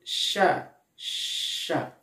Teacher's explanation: Ketika mengucapkan huruf sya, sya, ada aliran nafas yang mengalir secara deras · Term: sifat hamas